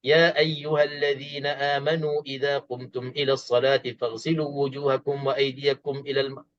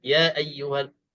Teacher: dalam mad jaiz munfasil walaupun ada tanda mad, tanda ombak ni, boleh kita baca mad ini 2 harakat